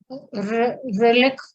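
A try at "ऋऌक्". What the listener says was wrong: No, there is no repa there. It is just l. Reluk.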